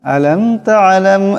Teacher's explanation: কিন্তু মিম সাকিনকে গুন্না করা যাবে না তালাম এখানেও মিম সাকিন এই মিম সাকিন কে গুন্না করা যাবে না